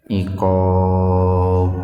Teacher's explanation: Iqab qalqalah kubro. Ada huruf qalqalah yaitu ba, jatuh pada waqaf, pada tanda berhenti.